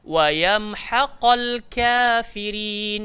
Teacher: Ha keluar dekat tengah tekak. So dia punya bunyi dekat sini.